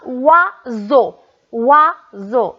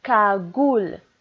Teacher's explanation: on entend wa au début du mot